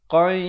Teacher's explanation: Qai, di sini tanwin bertemu ya, idgham bi gunnah. Asalnya qan, tetapi bila datang ya kena masuk beserta dengung 2 harakat.